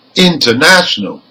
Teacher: the primary stress is the third syllable from the end because it ends in a L okay but the secondary stress · but the secondary stress is on the prefix in